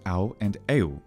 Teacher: This u value is retained in classical Greek diphthongs alpha, upsilon, au, and epsilon, upsilon, eu, which were pronounced au and eu